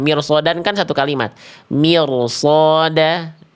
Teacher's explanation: tapi setelahnya huruf shad tebal maka r sukunnya ikut shadnya tebal. Itu kalau dalam satu kalimat. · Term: ro sukun